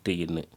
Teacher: நாவினது நுனி அன்னத்தினது நுனியை தொடுவதனால் தோன்றும் எழுத்துக்கள்